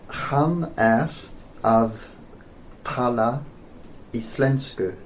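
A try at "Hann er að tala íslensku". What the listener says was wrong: Close, except the stress is on at the beginning of íslensku.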